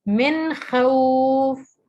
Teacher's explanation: غنہ نہیں کرنا, نون کو ظاہر کر کے پڑھیں گے